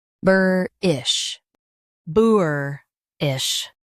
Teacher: US says burr, UK says boo. Bur-ish, boor-ish.